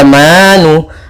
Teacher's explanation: ada mad tabi'i yaitu adanya fathah bertemu dengan alif kecil, maka ini kita namakan mad tabi'i, panjang 2 harakat